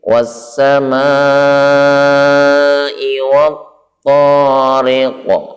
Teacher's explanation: Was-sama, ya, perhatikan di dalam tulisan huruf sin ini sebelumnya adalah alif lam, maka karena idgham maka suara alnya hilang, langsung masuk ke sin